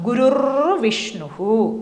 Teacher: ഇവിടെയും ഗുരു വിസർഗം, അത് കഴിഞ്ഞിട്ട് വിഷ്ണു വരുന്നു. അപ്പോൾ ഈ വിസർഗം ഇറായി മാറുന്നു.